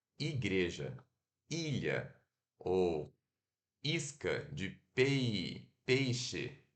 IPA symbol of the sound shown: i